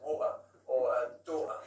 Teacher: in Cockney, you're dropping the T. So it's a glottal T.